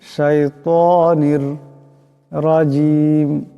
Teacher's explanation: এখানে নুনের নিচে দুই জেরের তনবিন, এরপর রা আসছে, এখানে ইদগাম হয়ে যাবে, বেলা গুন্না, গুন্না করা যাবে না।